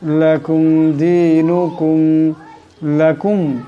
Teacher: এখানে মিম সাকিন, কিন্তু এই মিম সাকিনকে গুণনা করা যাবে না